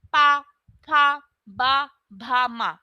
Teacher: जब ये बोलते हैं तब हमारे होठ जो होते हैं आपस में एक दूसरे को टच करते हैं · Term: पा वर्ग, पावर्ग